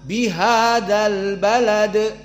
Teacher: Mana hamzahnya hilang hanya masuk lam karena dia alqamariyah bihadal Balad maka ba muraqqoqoh lam muraqqoqoh Dal muraqqoqoh semuanya murqoqoh · Maka di saat kita tanpa menyebut bihada, al balad, ada hamzahnya. Di saat disambung dengan bihada, bihadal balad, mana hamzahnya? Hilang. Hanya masuk lam karena dia al-qamariyah, bihadal balad. · Maka ba muraqqaqah, lam muraqqaqah, dal muraqqaqah. Semuanya muraqqaqah. Dan dal di sini karena dia dijadikan sukun, maka di sini hukumnya qalqalah. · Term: hamzatul wasl